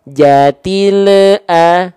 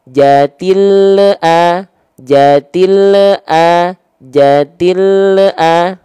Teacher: Terdengar dalam ujung pelafalan ada bunyi vokal EU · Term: memantul